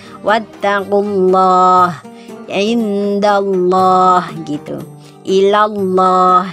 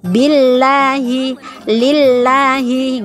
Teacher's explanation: Wattaqullah ini adalah hukum bacaannya tafkhim atau tebal. Apabila lafaz Allah lam jalalah bertemu atau jatuh setelah dhammah dan fathah, maka dibacanya tafkhim tebal.